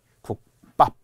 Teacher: 하진 않잖아요 이것이 바로 안눌림 소리 기억과 안눌림 소리 비이 만나서 두 개 안눌림 소리가 만나서 된 소리가 일어난다